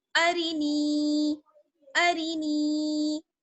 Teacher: अक्सर लोग रा को भी खींच देते हैं, अरीनी अरीनी नहीं पढ़ना है, रा को जल्दी से पढ़ना है, सिर्फ नून को खींचेंगे क्योंकि नून में या जुड़ी हुई है ना